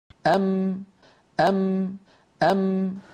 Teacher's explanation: میم جیسا کہ ہم تصویر میں دیکھ رہے ہیں ام، ام. دونوں ہونٹوں کے ملنے سے اس طرح ادا ہوتی ہے کہ اس کے ساتھ ناک سے بھی آواز خارج ہوتی ہے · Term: میم کا مخرج